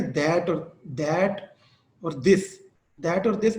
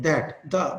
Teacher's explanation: उसकी वजह ये है कि डेंटल जो है ना, अक्सर पाकिस्तानी जो पर्सन्स हैं उनकी वोकल ट्रेनिंग नहीं है इसके ऊपर, अंग्रेज इसको सही प्रोनाउंस करते हैं क्योंकि ये फ्रीकेटिव्स हैं। हम जब कहते हैं ना दैट और दिस, तो हम उसे स्टॉप्स बना देते हैं, दैट द, बिल्कुल हम उसे रोक देते हैं आवाज को, जबकि ये फ्रीकेटिव्स है।